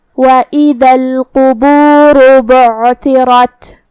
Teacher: قاف کی ادائیگی زبان کے جڑ اور تالوں کے نرم حصے سے ہے تو ہمیں قاف کو وہیں سے پڑھنا ہوگا اور اسے تفخیم سے بھی مطلب بھاری آواز میں کیونکہ قاف حروف تفخیم میں سے ہے.